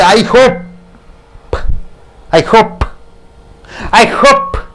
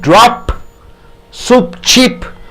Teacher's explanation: lips are touching each other and you are giving a bursting sound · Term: P endings